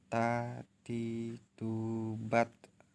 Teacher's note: Melafalkan huruf Ta dengan menyentuh ujung lidah dengan gusi gigi seri bagian atas dengan mengalirkan sedikit nafas.